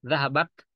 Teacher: Zahabat, nah semacam kita kayak meludah sedikit gitu. Zahabat, ada T yang keluar, ada udara yang terpercik sedikit. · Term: al-hamas